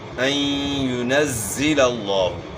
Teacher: اور زا کی ادائیگی میں آپ نے خیال کرنا ہے کہ زا کی ادائیگی میں زبان کا سرا سامنے والے نیچے دانتوں کے ساتھ جو ہے لگے گا، اور معمولی سا اوپر دانتوں کے ساتھ ، ان ینزل اللہ، صفت سفیر آپ نے اس میں ادا